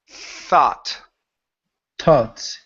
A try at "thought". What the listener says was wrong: So, when you're doing it, your tongue is coming too far up, too far to the top of your mouth.